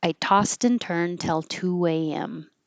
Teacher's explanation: You won't hear this D in turn because the next T will release the sound